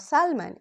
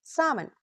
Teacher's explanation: Spelling लिखी जाती है SALMON, लेकिन L प्रोनाउंस नहीं किया जाता. It's not सैल्मन, it's सामन. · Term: Silent L